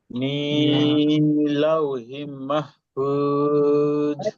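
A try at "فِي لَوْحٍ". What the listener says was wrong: লাউহিন গুণা করতে হতো ভাই। লাউহিন মাহফুজ। ফুজ হালকা নরম, ঠিক আছে ভাই।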